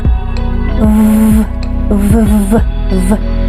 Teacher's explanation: el aire pasa entre el labio inferior y los dientes superiores